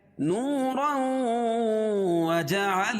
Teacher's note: وَجَعَلَ الْقَمَرَ فِيهِنَّ نُورًا، نورا، واو ساکن سے پہلے پیش ہو تو واو مدہ، اور 2 زبر کی تنوین کے بعد ادغام مع الغنہ کے 4 حرفوں میں سے واو آ جائے گی، تو یہاں غنہ کر کے پڑھیں گے